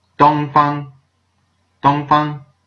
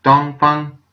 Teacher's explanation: It's two high tones.